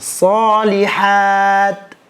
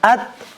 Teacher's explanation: kalau ta misalnya kita ujung lidah menempel ke pangkal gigi seri atas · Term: ta sukun